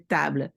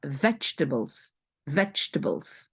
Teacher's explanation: Donc le A ici de table, c'est presque, on l'entend pas